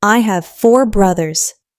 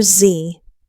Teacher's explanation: make sure you pronounce that S at the end of brothers. It's a Z sound, actually.